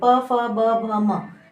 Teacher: जब बोलते हैं तो हमारे दोनों ओठ जो हैं वो एक दूसरे को छूते हैं, इस कारण इसे इसका उच्चारण स्थान जो है वो ओठ बताया गया है, या ओष्ठ भी कहते हैं। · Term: प वर्ग